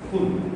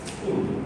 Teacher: when we use the aspirated sound here, it means grass. And when we use the unaspirated sound here, it means fire.